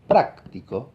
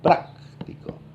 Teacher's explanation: Practico. En cambio, si digo práctico, la voz más aguda está en la primera sílaba